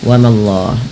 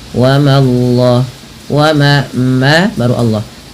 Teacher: Langsung Allahnya tebal tapi memanya tipis.